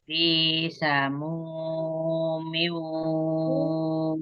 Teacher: Maunya kan ya ketika miu waha ya, ha kecil waha wahamim. Ya, mimnya sempurnakan ketika dia sukunnya ya bertemunya dua bibir ya, tetap dipertemukan sempurna.